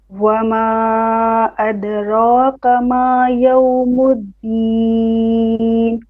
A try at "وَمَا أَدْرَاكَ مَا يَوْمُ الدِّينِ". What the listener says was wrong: أدراك. كاف, not qa. Once again. Once again, you breathe after the deen.